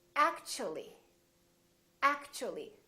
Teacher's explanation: So the T and U create a new sound, and it sounds kind of like ch.